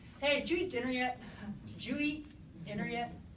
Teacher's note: So jeet yet all becomes kind of one chunk, one phonological word.